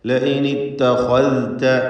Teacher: ഖാ പൂർണ്ണമായ തഫ്ഖീം കൊടുക്കുക, ദാല് വ്യക്തമാക്കുക.